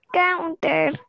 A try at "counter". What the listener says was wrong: Counter. La T más fuerte. Counter.